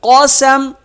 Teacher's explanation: سین زبر س قس میم دو پیش من قسم وقف قسم میم ساکن ہو جائے گی قاف موٹا ہوگا